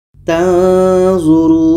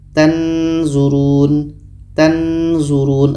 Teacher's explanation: Dikarenakan kita ketika sebut huruf nun kita sudah merasakan huruf zo, maka akan terhasil di situ bunyi samar.